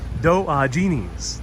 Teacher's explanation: it's Diogenes. Accent is on the second syllable.